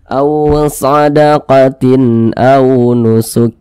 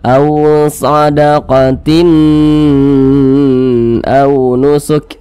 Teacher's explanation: lagi di samping huruf hamzah termasuk salah satu huruf izhar halqi maka dibaca jelas tidak berdengung baca pendek saja